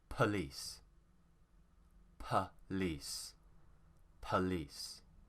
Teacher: in british english we don't really want to pronounce the full vowel sound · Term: schwa sound